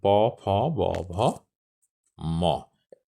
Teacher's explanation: উভয় ঠোঁটের স্পর্শে যে সকল ধ্বনি উচ্চারিত হয় সেগুলোকে বলে অষ্টধ্বনি যেমন পভ ম একটু সহজ করে আরেকটু বলি